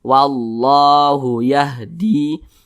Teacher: nah ini di atas huruf lam ada tanda baca fathah berdiri maka huruf lam dibaca panjang Mad Thobi'i panjangnya dua harakat